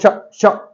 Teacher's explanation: कंठ से नहीं बोला जा रहा दांत यूज नहीं हो रहा मूर्धा यूज नहीं हो रही तालू यूज हो रहा है